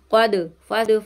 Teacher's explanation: یہاں پہ دال کی آواز پلٹ کر آئے گی